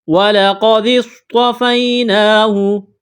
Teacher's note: صاد میں سیٹی کی آواز پیدا کریں گے، صاد کو موٹا کرنا ہے